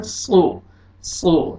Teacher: सीन नहीं पढ़ना, सौद को आपने मोटा अदा करना है। सो, सो, ताकि सीन और सौद में आपको डिफरेंस पता चल जाए, पता चलेगा आप सौद पढ़ रहे हैं।